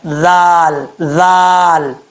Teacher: اس کا مخرج ہے زبان کا سرا اوپر والے دانتوں کے اندرونی کنارے سے لگے تو ذال پڑھا جاتا ہے